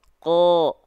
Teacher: Karena mereka adalah huruf-huruf yang tebal. Huruf-huruf yang tebal ketika dia berharokat baris atas maka dibaca condong ke vokal O.